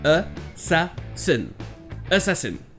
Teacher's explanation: la première syllabe n'est pas accentuée, donc ça se prononce E